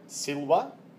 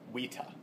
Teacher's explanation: the letter V will always be pronounced W